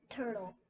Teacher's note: our airflow is a little bit more forceful for that T sound and our voice is turned